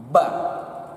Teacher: Jadi merapatkan bibir atas dengan bibir bawah. Penyebutannya ba. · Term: huruf Ba